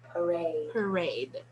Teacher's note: the first one is a schwa and the second one is a diphthong